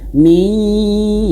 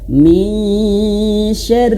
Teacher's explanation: nun mati bertemu shin, hukumnya ikhfa ditahan. Min, ya samar-samar antara nun dan shin.